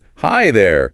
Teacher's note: with that upward inflection after hi and downward inflection after there. It sounds very welcoming.